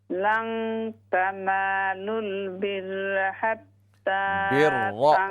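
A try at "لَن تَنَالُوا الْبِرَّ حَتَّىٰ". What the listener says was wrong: रा को मोटा करें, रा ज़बर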